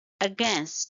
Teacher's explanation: it's two syllable word and stress is on the second syllable